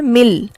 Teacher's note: ٹھیک ہے، یہاں لکھنے میں تو نون ہے لیکن جب ہم پڑھتے ہیں تو یوں پڑھ رہے ہوتے ہیں گویا نون تو موجود ہی نہیں ہے، میم ڈائریکٹ لام سے جا کر ملتا ہے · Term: ادغام بلا غنہ